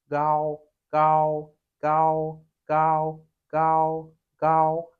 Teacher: The G in Chinese is somewhere in between the K and the G in English. Like it's not as strong as a G.